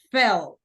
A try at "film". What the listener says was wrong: Al final hay como una M. Entonces es, pues, tú estás diciendo fell, fell, fell. Agrégale una M al final. Film. Film.